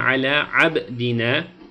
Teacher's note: Ala abdine derken buradaki ba harfine vurgu yapıyoruz.